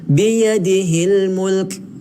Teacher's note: huruf kaf ni kalau kita nak berhenti di sini, kita kena bunyi angin sedikit. Kerana dia adalah huruf hamas, huruf mahmus, huruf yang keluar angin.